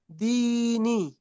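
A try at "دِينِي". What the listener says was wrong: নি টান দাও নি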